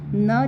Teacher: दंत नासिका कहलाता है